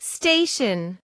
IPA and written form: ˈsteɪʃən (Station)